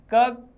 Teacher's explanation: क कंठ से इन सब का उच्चारण गले से हो रहा है, जीभ कहीं स्पर्श नहीं हो रही